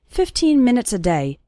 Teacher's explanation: the last two syllables of minutes become very small and just serve to connect with the word day.